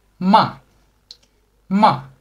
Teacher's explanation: the last tone is a tone falling down so you start high and let it go down